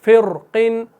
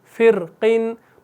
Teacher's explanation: इस रॉ को आप मोटा भी पढ़ सकते हैं और बारीक भी पढ़ सकते हैं, जैसे फ़िरक़िन या फ़िरक़िन, फ़िर मोटा, फ़िरक़िन और बारीक फ़िरक़िन।